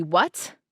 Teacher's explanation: So now I've got a fricative T.